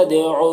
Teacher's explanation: دال میں قلقلہ ہوگا